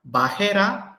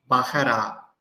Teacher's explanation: Instead of Shua, you just add a Patah. That is A.